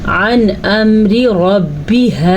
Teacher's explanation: अन अम्री रब्बिहा, नून साकिन के बाद हमज़ा आया हुआ है तो नून साकिन को हम ज़ाहिर करके पढ़ेंगे क्योंकि हरूफ हल्की में से हमज़ा है।